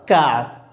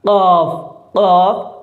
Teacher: تو جب تالو کے سخت حصے سے زبان کی جڑ لگتی ہے تو کاف ادا ہوتا ہے، اور جب زبان کی جڑ تالو کے نرم حصے سے لگتی ہے تو قاف ادا ہوتا ہے، قاف ادا ہوتا ہے، قاف قاف اور کاف، قاف اور کاف۔